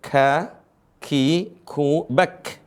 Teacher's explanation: huruf ka di situ ada desis